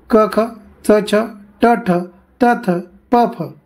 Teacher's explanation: कठोर वर्णालाच श्वास वर्ण किंवा अघोष वर्ण असं म्हणतात.